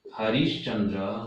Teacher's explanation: हरि धन चंद्र, यहां पर विसर्ग और च है। विसर्ग के स्थान पर हमने किया श, च होने के कारण बनेगा तालव्य स, तो बनेगा हरिश्चंद्र।